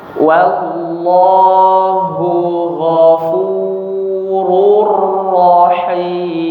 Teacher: Ketika ada lam tafkhim ya pada lafzul jalalah yang tebal hanya huruf lamnya ya. Huruf sebelumnya kalau dia tipis tetap ditipiskan.